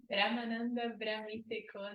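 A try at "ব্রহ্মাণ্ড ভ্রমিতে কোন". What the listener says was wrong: It's not Brahmananda, Brahmanda. Brahmanda means universe.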